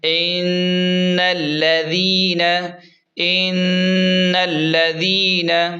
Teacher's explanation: نون زبر نہ، ان الذین، ان الذین۔ نون پر غنہ کریں گے کیونکہ نون مشدد ہے، اور ذال کو نرم پڑھیں گے کیونکہ ذال نرم حروف میں سے ہے۔